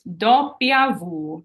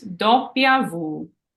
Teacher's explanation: I underlined the do and the Vu because that's where the accent goes